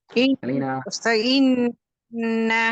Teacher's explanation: சதி செய்யப்பட்ட நூன் நாங்க இரண்டு ஹரக்கத் அளவுக்கு நின்று போவோம்